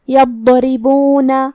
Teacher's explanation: کلمت یضربون میں یہاں ہمیں حرف الضاد کو موٹی آواز میں پڑھنا ہے اور کیونکہ اس پہ جزم ہے تو ہم ضاد کو ظاہر کریں گے. را کے نیچے زیر ہے تو یہاں را کا حکم ہے ترقیق. ہم حرف را کو پتلی آواز میں پڑھیں گے. یضربون.